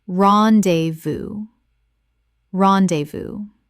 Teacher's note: Three syllables with the S completely silent from French.